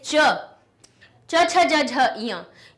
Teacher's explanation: इन सभी की ध्वनि तालु से निकली।